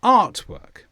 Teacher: The stress is on art, artwork.